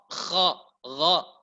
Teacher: Makhrajnya kha berada di pertengahan tenggorokan, di ujung tenggorokan bersama dengan gha